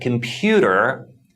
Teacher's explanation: in the word computer, the stress falls on the second syllable. You can clearly hear that the P part is pronounced louder and longer than the other syllables.